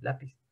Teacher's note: la tonicidad está en la penúltima sílaba, entonces es una palabra grave.